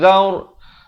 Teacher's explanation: ra di sini dibaca tebal, jangan baca zar tetapi zaur.